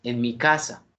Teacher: la expresión en y mi no tienen tono por lo tanto se une todo de la la parte fonética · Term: proclítico